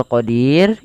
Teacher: Kita boleh memanjangkan di-nya sepanjang 2 harokat sebelum mematikan huruf ra, atau boleh 4 harokat, atau boleh 6 harokat. Nah, hati-hati di sini di lafal huruf ra itu tidak boleh dibaca ra-nya tebal. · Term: mad arid sukun